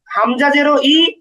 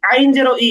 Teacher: হামজাজের ই খুব স্বাভাবিকভাবে, আর আইনজের ই এটা একটু গলার মাঝখানে নিতে হবে, উচ্চারণটা শক্ত করে করতে হবে